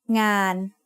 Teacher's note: The sound of น อ ห น ู makes it a live syllable, so it is mid-tone.